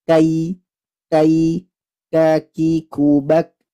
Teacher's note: Jadi nafasnya itu hanya dipercikan saja Kenapa karena sifat syidahnya itu mengalahkan sifat Hames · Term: huruf Kaf